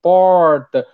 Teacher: Aí uma pessoa do interior de São Paulo vai falar porta, com R muito puxado